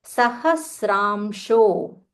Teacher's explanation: So here there is half sa followed by full ra.